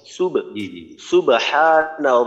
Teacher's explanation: প্রথমে তো হলো বায়ের মাঝে কলকল আসছে সুব সুবহান রাব্বিয়াল আযীম এখানে আইনে কিন্তু টান দেওয়া যাবে না